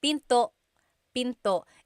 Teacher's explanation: And remember, don't forget the glottal stop. Don't forget to stop the sound at the end. That's called a glottal stop.